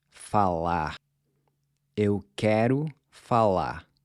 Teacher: Notice how I'm barely pronouncing the R in falar. Now, there's a lot of regional variation in how the final R is pronounced, but for our purposes, we're going to treat it almost as a silent letter.